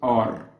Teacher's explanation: ra is not exactly the English R because this is the rolled R this isn't R this is R we actually don't have R